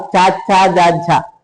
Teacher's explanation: నాలుక దవడల సకారం తీసుకొని పలుకుతుంది కాబట్టి అవి తాలవయాలు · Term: తాళవయాలు